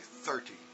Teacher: If I say 30, the stress is there at the front.